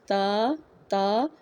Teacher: زبان کی نوک ثنایا اولیاء اوپر والے دانتوں کی جڑ میں لگے گی